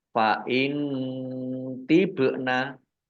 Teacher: nun sukun bertemu dengan huruf to bacaan ikhfa dibaca samar-samar. Ba sukun bacaan kolkolah dibaca memantul ditampakkan pantulannya.